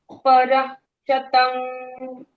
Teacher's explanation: फिर समा पर प और र के बाद विसर्ग है तो विसर्ग का साउंड पर के जैसे आ पर पूरा ह साउंड नहीं आधा पर शतम शतम ओके जी पर शतम पर शतम नॉट परह